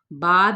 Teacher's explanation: با بھی دونوں ہونٹوں کو ملانے سے